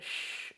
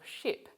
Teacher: the alveolar ridge or the area just behind the alveolar ridge the shh sound of ship is a voiceless palato alveolar fricative and the symbol for it is a long stretched out s